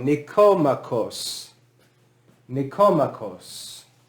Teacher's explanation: in greek the accent is on that first o